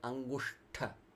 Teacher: That soft, deep sh sound, cerebral. Tongue pointing up to the top of your head.